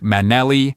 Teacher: you hold on to that L sound for a moment